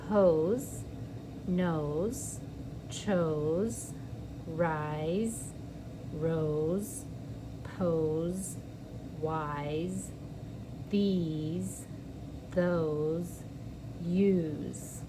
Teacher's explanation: it's going to make that s sound like a z because it's between two vowels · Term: z sound